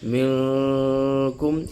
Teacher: میم نون ساکن کے فوراً بعد جو حرف کاف ہے یہ اخفا کا حرف ہے۔ منکم، اب اس میں ادغام بھی نہیں ہے، بغیر ادغام کے جو ہے غنہ ہو رہا ہے۔ یہ نون ساکن کی مثال ہے۔